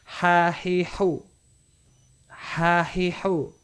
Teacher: dia langsung dari pita suara keluar tanpa ada halangan